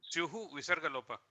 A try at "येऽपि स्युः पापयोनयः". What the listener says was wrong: No, not Visargalopa. Syuhu, not Visargalopa. Visarga will be there. It has to be pronounced as this Upadmani. Yaha. Syuh Papa Yona Yaha. So definitely not Visargalopa. So in my book, there is no Lopa. Visarga must be printed there.